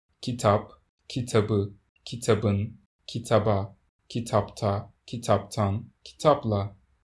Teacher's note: You can still hear the voiced b sound in the accusative, genitive, and dative case forms, in which it's followed by a vowel.